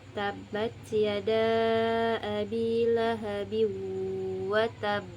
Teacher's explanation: Dengan pantulan yang lebih kuat dan ditekan selama dua harakat di mana suaranya ditahan sebentar sebelum dipantulkan. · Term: qalqalah akbar